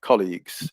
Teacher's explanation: the stress is always on the first syllable